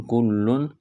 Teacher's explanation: تنوین کے بعد حروف حلقی میں سے حمزہ ہے تو تنوین پر غنہ نہیں کریں گے، آواز ناک میں نہیں چھپائیں گے